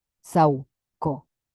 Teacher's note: cuando leemos en poesía, esto funciona como un diptongo. Raíz, sauco, sauco. Lo leemos juntos.